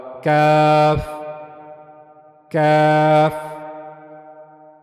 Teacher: کاف کو ادا کرنے کے لیے ہم جو اوپر والا سخت والا حصہ ہے اس کو استعمال میں لائیں گے اور وہاں سے کاف ادا ہوگا، کاف کاف۔